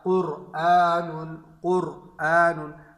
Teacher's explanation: را پہ خود سکون ہے لیکن اس سے پہلے والا حرف جو قاف ہے اس پر پیش ہے تو را جو ہے پر پڑھی جائے گی